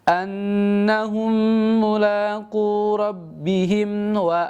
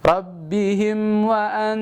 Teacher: di kalimat rabbihim itu jangan terlalu ditahan ya. Ini tidak ditahan karena nama hukumnya adalah izhar syafawi.